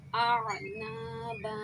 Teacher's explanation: اعنابا، دیکھیں یہاں پہ بھی الف مدہ ہو گیا، ایک زبر حذف ہو گیا وقف کی صورت میں، ایک زبر رہ گیا تو الف مدہ ہوا، یہاں پہ ایک الف کی مقدار، یہ دو الف کی مقدار کھینچیں گے۔